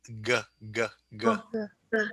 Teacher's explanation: It's in the back of your mouth, on the soft palate. G, g, g. Way in the back.